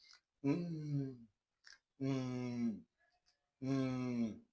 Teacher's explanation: This sound is described as voiced bilabial nasal. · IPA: /m/